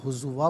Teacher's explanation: وَمَا أُنذِرُوا ہزواً، یہاں وقف پڑھیں گے تو ہزوا پڑھیں گے کہ 2 زبر کی تنوین وقف میں الف سے چینج ہو جاتی ہے